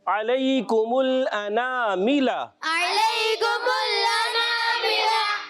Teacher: حمزہ ادا کرنا ہے عین کی آواز نہیں